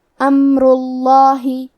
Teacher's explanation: ہمیں لفظ الجلالہ مطلب کلمت اللہ کلام کو تفخیم سے مطلب بھاری آواز میں پڑھنا ہے